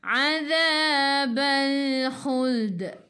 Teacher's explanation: Bila berhenti bacaan ada huruf qalqalah baju dah kotor ba jim dal qaf ta dan tak ada baris sabdu, namanya qalqalah kubra. Qalqalah besar, lantunannya besar, kubra.